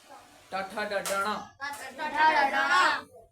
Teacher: એ આપણા મૂર્ધામાં જે અડે જીભ આપણી તો જે ટ વર્ગ બોલાય